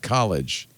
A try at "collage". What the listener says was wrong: No, it's not like college. It's just collage. Collage.